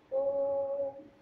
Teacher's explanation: प्लुत स्वर को लघु स्वर से बोलने में तीन गुना टाइम लगता है। जैसे हम किसी भी शब्द का उच्चारण करते हैं ओम, तो ओम के बीच में जो हम लोग एक संकेत के रूप में एस बनाते हैं यही होता है प्लुत स्वर का उदाहरण।